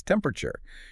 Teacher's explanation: You squash the middle right out of it bending the word in half and you lean heavily into that first syllable. It becomes a rhythmic bounce. So you put the bright spotlight on that first syllable and let the rest of the word fall into the shadows of the stage.